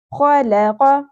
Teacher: خ اور قوف پور پڑھے جائیں گے. خ جو ہے وہ خراش کے ساتھ پڑھا جائے گا, کھردرا اس کے اندر آپ کو ایلیمنٹ نظر آئے گا.